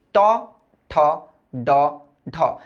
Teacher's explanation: যখন আমরা ট, ঠ, ড, ঢ উচ্চারণ করি, ট, ঠ, ড, ঢ, দেখো জিভটা না একটু উল্টায় গেছে, উল্টায় যায় তোমার ছাদে যায় বাড়ি খেতেছে। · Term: মূর্ধন্য